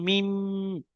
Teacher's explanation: দুই ঠোটের শুকন অংশ মিলিত হয়ে উচ্চারিত হয় মিম